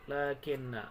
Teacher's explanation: अलिफ मद्दार है लेकिन नहीं खींचेंगे, लाकिन्ना पढ़ेंगे ऐसे, लाकिन्ना अलिफ ख़त्म कर देंगे, लिखा होगा हमारे सामने लेकिन पढ़ेंगे नहीं।